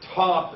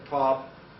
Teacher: If I say top and then I say pop, that's different levels of aspiration that was much stronger the first time than the second time. Because maybe I was being more emphatic.